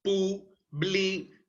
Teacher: ¿Y dónde se encuentra el mayor impulso de voz? En la última sílaba. Dad. Ahí está presente entonces el acento prosódico.